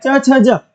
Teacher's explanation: च वर्ग का उच्चा स्थान तालू है